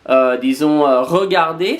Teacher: c'est un peu comme un R, disons, vocalisé